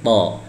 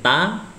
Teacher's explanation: Huruf to ini sama, makhrajnya sama dengan huruf ta ya, hanya saja huruf to itu ditebalkan.